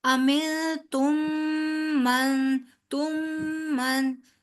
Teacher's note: तुम पे भी होगा एक गुन्ना, और मन पे भी होगा